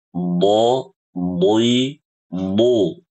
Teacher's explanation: Kalau do, di, du pakai ujung lidah, makhrajnya huruf dal